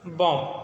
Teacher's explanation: और अंतिम बी ध्वनि का लोप हो जाता है